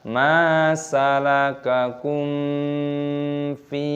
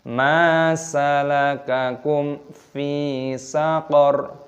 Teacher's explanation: Mim sukun bertemu dengan fa, hukumnya dibaca idhar syafawi, dibaca jelas, tidak boleh didengungkan. Jangan dibaca ma salakakum fi, tidak boleh, harus dibaca jelas.